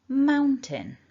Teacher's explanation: our strongest syllable is syllable number one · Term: stress